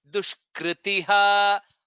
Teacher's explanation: It is kr, not kri.